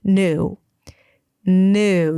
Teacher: You drop the y sound, new. So it's just an N and then oo, and make sure you round your lips and pretend like there is an extra W at the end. That's a long vowel or a longer vowel. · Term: contemporary American pronunciation